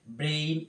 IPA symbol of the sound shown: eɪ